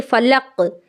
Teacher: تو قاف کی آواز لوٹ کر کے واپس آنی چاہیے۔ تشدید نہیں کرنا ہے، فلقہ نہیں کرنا ہے، فلق۔ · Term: قلقلہ